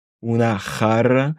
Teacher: Ici, j'accentue un peu plus le R parce que justement, c'est un double R.